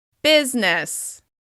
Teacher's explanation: This is a great word for practicing contrast because it has the same vowel sound on both syllables. However, the first syllable is stressed and the second is reduced.